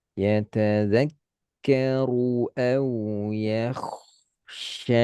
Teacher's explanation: Yatadzakkaru ru tebal dan khoknya tebal.